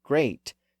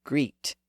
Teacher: the word could be pronounced with either the lower a sound or the higher e sound